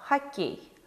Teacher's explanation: о безударном положении звучит как а